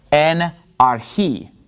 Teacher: the accent is on the last syllable in this word archi